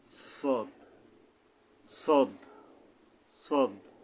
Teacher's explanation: মোটা ভাবে এটা কোথায় আইসা মেলবে একই জায়গায় মিশতেছে এটাও মানে জিহ্বার আগাটা সামনের নিচের দাঁতের আগা থেকে শীষ সহ মোটা আদায় হবে